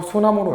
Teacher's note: 명사와 명사가 결합하여 합성어가 될 때 니은, 디귿, 시읒, 지읒 등으로 시작하는 명사 앞에서 받침 리을이 탈락하는 규칙이 있었대